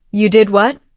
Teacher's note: For example, if you say, "You did what?" with a rising tone at the end, it shows surprise